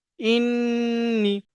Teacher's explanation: গুণনাটা কেমন, ওই যে ইন, শুধুমাত্র হামজা নুন জের ইন হয়, ওই ইনটা নাকের মধ্যে একটু চেপে ধরে একালিপ টানতে হয়, টানলে ওটাকে গুণনা হয়ে যায়।